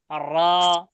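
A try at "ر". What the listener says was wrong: Double হয় কেন? আর এরকম হয় কেন? র ডবল করবেন না।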